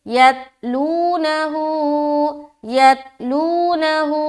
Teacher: लू में वाव मद्दा कर रहे हैं, वाव साकिन और उससे पहले पेश है, वाव मद्दा खींचेंगे